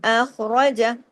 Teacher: خا کو جماؤ کے ساتھ، خا کو ہیوی کر کے، کیونکہ 7 موٹے حروف میں خا خصا خواہ شامل ہے نا.